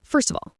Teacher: First of all, >> first of all, the st in first links to the O in of the V sound in of links to the A in all.